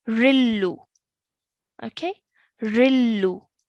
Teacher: So we have tanween underneath the ra, okay, and followed by a lam mushaddad, but in recitation that tanween turns into a single stroke of kasra and followed by lam mushaddad as it is. So that nasal sound is removed. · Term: no nasal sound